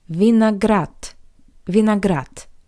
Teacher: the voiced consonant D at the end of this word also sounds like the paired voiceless consonant T